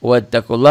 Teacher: lafaz Allahnya dibaca tebal tafkhim ya tebal itu tafkhim